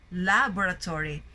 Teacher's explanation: you notice that the stress is in the first syllable, laboratory.